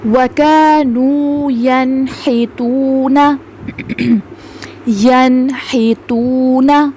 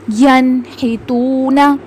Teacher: نون ساکن کے بعد ہا حروف حلقی میں سے آ رہا ہے تو ہم نے یہاں پہ نون کی آواز کو ظاہر کر کے پڑھا، ینحتون۔ یہاں پہ ہم نے اس میں غنہ نہیں کرنا۔ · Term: اظہار